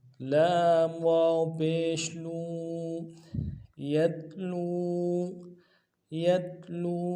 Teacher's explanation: لام واو پیش لو، واو مدہ ہے، واو ساکن اس سے پہلے پیش ہو، واو مدہ ایک مقدار میں کھینچیں گے اور جزم بھی ہے۔